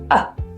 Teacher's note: pronounced as a quick relaxed neutral vowel